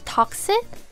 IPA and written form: ˈtɑːk.sɪk (toxic)